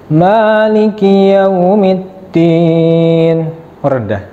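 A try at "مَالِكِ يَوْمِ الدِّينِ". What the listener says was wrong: Turun. Karena tadi Ar-Rahmanir Rahim turun. Maliki yaumiddin harus naik. Maliki yaumiddin.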